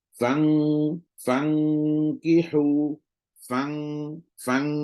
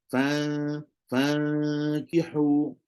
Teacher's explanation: kena rasa belakang lidah kita naik kena rasa belakang lidah kita ni pai lidah kita naik sentuh